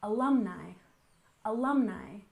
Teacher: And finally, we have alumni. We stress the second syllable, alumni, alumni